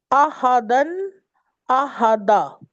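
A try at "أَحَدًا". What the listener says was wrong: لمبا کریں. جب ہم وقف کریں گے تنوین پر تو لمبا کریں گے. नहीं, अहदा नहीं, अहदा। अलिफ जबर के साथ अलिफ भी पढ़ेंगे हम, लंबा करेंगे।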